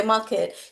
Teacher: when we say market you can't even hear the R in market